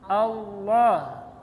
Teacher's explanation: Kalau tafkhim Allah, tapi jangan loh, ya, jangan loh. Nah, tapi Allah tidak terlalu o, jangan terlalu o, jangan terlalu a, tengah-tengahnya. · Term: Tafkhim pada Allah